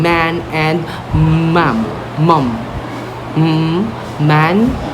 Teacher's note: for the letter M wherein we use our bilabial. Okay, lips close. · Okay, now let's proceed to the nasal sounds, wherein these sounds are made by completely blocking the airflow in the mouth and letting it pass through the nose